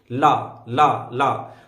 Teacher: वायु जो होगी जीभ के बगल से निकलने लगती है, तो इसको बोलते हैं पार्श्विक